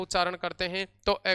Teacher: अ का उच्चारण जीवा के मध्य के भाग से हो रहा है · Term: मध्य स्वर